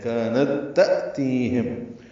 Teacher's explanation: تا میں حمزہ ساکن روایت حفص میں جھٹکے سے پڑھا جاتا ہے · تا ساکن ہے اور اس کے بعد پھر تا ہے، دونوں تاؤں کو ملا دیں گے یعنی ادغام کریں گے، یہ ادغام مثلین ہے۔